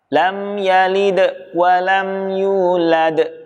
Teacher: Ya, di sini hampir sama kasusnya adalah lagi-lagi pada huruf dal. Huruf dal yang sukun terpantulkan namun juga disertai dengan tekanan di ujungnya.